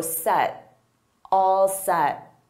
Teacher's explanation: Native speakers will use both, are ya, are you all set? And notice I don't push out that T